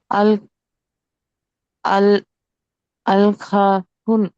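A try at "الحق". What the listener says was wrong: అల్ అల్ హక్. కాఫ్ కాఫ్ మీద శ్రద్ధ ఉంది, ఒత్తి పలకాలి. రెండో అక్షరము ఖా కాదు కదా, హా అది. హా.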